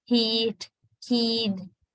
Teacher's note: Long E sound, and that is what is called high front tense vowel. And high front lax vowel is the short E.